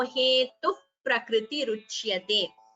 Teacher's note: Visarga followed by pa is upadhmaniya.